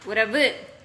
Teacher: முற்றியல் உகரம் அப்படின்னா தன்னுடைய முழுமையான மாத்திரை அளவிலேயே ஒளிக்கும்